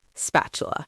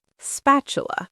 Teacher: The middle of the word has a T in it. But in natural spoken English, especially in American English, that T often sounds more like a soft D, spatula. The way the tongue moves makes the T softer, spatula.